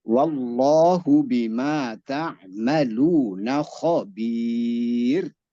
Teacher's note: Wallahnya lafzul jalalah dibaca tafhim. Benar. Lafzul jalalah lamnya tafhim.